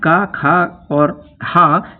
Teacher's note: ये तीनों कंठ वर्ण हैं, क्योंकि इनका उच्चारण स्थान कंठ होता है